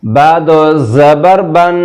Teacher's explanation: اس کو پڑھیں گے با دو زبر بن، ایسے غنہ کے دو زبر کے بعد زبان جو ہے اوپر دانت ہیں، دانتوں کے اوپر تالو پہ زبان کی نوک لگا کے رکیں گے، آواز ناک میں جائے گی۔